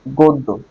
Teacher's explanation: গ এর পরে গ দ এর সাথে জ ফলা আছে তার মানে দ ডাবল হবে